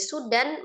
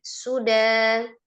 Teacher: Mad yang terjadi ketika waqaf pada huruf yang berharakat fathah tanwin dibaca menjadi fathah dua harakat ya. Jadi dari sudan menjadi suda harakat. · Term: mad iwad